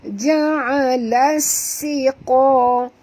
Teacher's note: Las alif lam syamsiah, masukkan bunyi lam terus ke dalam sin, disertai dengan jud ataupun tekan, kerana sin ada 2, jadi kita baca ja'alas siqa, dan huruf sin ni bunyikan safirnya, safir itu ialah bunyi berdesir. Ja'alas siqa, Qa ni tebal, jangan baca siqa, tapi baca siqa.